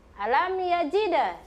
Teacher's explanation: Jadi mimnya mengalir begitu saja, dibaca jelas. Tidak boleh dipantul-pantulkan, tidak boleh didengung-dengungkan, atau tidak boleh berhenti ketika membaca huruf mim sukun. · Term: izhar syafawi